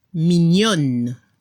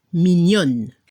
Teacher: Se escucha la N al final y no se pronuncia la E al final.